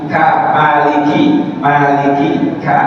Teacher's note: setiap misalkan huruf kaf ada udara keluar sedikit · ka ada udaranya keluar dikit jangan banyak ya